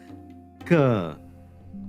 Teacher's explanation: Ka is both unvoiced and unaspirated. It's a Velar. Now, no vibration, no puff of air.